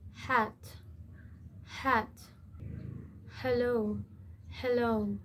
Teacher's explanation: It is a gloal fricative produced with open vocal cords where air simply passes through the throat. Some languages don't have this sound so learners may drop or soften it. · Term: glottal fricative